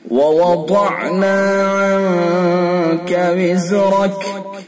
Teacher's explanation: ضاد کو پر کریں گے اور ضاد کو زبان کی کروٹ اور اوپر کی ڈاڑوں کی جڑ سے نکالیں گے۔ وَوَضَعْنَا، اور پر کر کے پڑھیں گے، پر یعنی موٹا۔